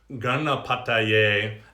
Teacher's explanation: the N for the gana is the retroflex. You're gonna actually bring your tongue back. You can't see that on the palate.